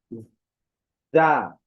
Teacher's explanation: উচ্চারণের ক্ষেত্রে ঝিঝি প্রকার আওয়াজের ন্যায় ধ্বনি